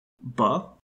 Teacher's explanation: a voiced bilabial stop